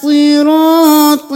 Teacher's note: صاد بھی موٹا، را بھی موٹا، طا بھی موٹا۔ صراط نہیں کرنا، صراط۔